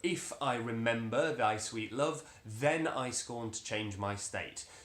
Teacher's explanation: we have that word then in a conventional strong stress position